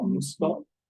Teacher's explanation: For children, to refer your children, son and daughter, son is musuko, and it's usually kind of shortened musuko. So the M and the S are pretty close, and then you lose some vowels in the middle. So musuko. And for daughter, musume.